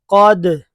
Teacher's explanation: اب قاف حروف قلقلہ میں سے ہے تو اس میں ڈبل آواز آئے گی، اور دال بھی۔